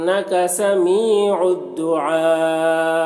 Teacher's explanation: دعا یہاں پر مد متصل ہے، حرف مد کے بعد حمزہ اسی کلمہ میں ہے، تو مد متصل کو 3-4 الف کے برابر کھینچ کر پڑھیں گے